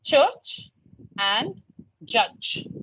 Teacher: Affricate is a mixture of stop and fricative, right? It starts from a stop, moves to a fricative.